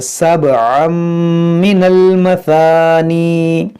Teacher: یہ تنوین کے بعد میم یہاں پر ادغام کریں گے، با میں قلقلہ کریں گے